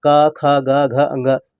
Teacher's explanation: कंठ है, क्योंकि का वर्ग के जितने भी व्यंजन होते हैं वो कंठ से बोले जाते हैं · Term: कंठ व्यंजन